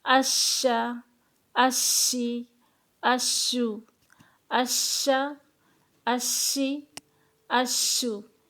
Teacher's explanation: شین میں تفشی پائی جائے گی